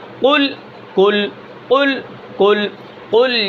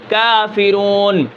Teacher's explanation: قاف کو یعنی زبان کی جڑ اور اس کے مقابل اوپر کا تالو